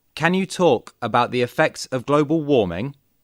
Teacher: Listen and repeat these questions, paying attention to their rising intonation.